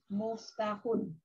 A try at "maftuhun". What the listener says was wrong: Kalau terbuka bukan muftahun tapi maftuhun. Maftuhun. Ya, maftuhun ya, terbuka.